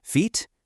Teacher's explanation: And a really key difference is how much muscle you're using. A tense vowel like the e in feet uses more muscle cuz your tongue is way up high and forward.